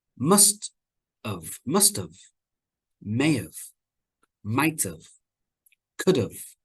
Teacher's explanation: have becomes very weak we don't say it strongly it's weak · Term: the schwa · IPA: /əv/